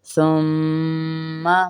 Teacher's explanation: میم مشدد ہے تو ہم اسے غنہ کریں گے۔